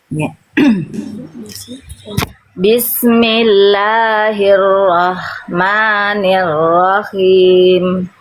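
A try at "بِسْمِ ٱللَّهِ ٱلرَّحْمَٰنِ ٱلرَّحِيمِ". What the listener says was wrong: Oke, H kecil sukunya udah lebih baik, tinggal H kecil harokatnya nanti dilatih masih ke kho, khim. Nah, masih itu tuh harusnya him. Dia lebih lembut. Kalau kho itu nafasnya yang ngalir lebih kasar sedikit dia.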